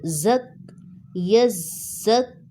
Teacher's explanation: زا سیٹی والا حروف ہے، اس کو سختی سے پڑھا جائے گا، اور کاف باریک ہے، اس کو موٹا نہیں کرنا، اور اس کے اوپر سٹینڈنگ زبر ہے، اس کو ہم 2 سیکنڈ کے لیے کھینچ کر پڑھیں گے۔